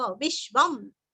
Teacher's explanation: अनुस्वार का उच्चारण आधा म